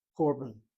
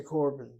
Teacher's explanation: the Ashkenazim make no distinction with the sound. When they see a kamatz, it's always an or sound.